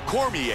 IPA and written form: ˈkɒrmɪeɪ (Daniel Cormier)